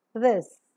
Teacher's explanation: is coming out from the lungs passes out with audible friction the vocal cords vibrate during the articulation of the sound hence the three term label for describing the sound is voice